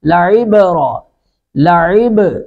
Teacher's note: عین کو حلق سے ادا کریں گے ، عب، با ساکن پر قلقلہ کریں گے، لعبرۃ لمن، تا